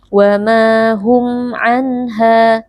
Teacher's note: ha ada mad tabi'i karena ada alif yang sebelumnya berharakat fathah, dibaca panjang 2 harakat · nun sukun dibaca dengan jelas tanpa berdengung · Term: izhar halqi